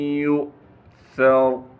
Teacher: اس کے بعد یا کو ہم نے حمزہ سے ملانا ہے، یہ نیچے واو لکھا ہوا ہے، اسے ہم نہیں پڑھیں گے، اس کے اوپر جو حمزہ ہے اس کو ہم ہلکے سے جھٹکے کے ساتھ پڑھیں گے۔ سا کو باریک کر کے نرم کر کے پڑھنا ہے، را کو موٹا کر کے پڑھیں گے۔